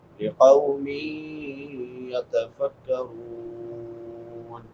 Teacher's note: نون تنوین کے بعد حروف یرملون میں سے یا ہے، ادغام مع الغنہ